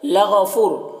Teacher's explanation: غین حروف مستعلیہ میں سے پر پڑھیں گے، فو واو مدہ ہے، فو میں واو مدہ ہے، ایک الف کے برابر کھینچیں گے۔